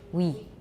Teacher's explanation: start from a high rounded vowel that is fully back, like a cardinal oo. Glide from this vowel very rapidly to the following vowel. The result will be similar but not identical to the English word we. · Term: French sound w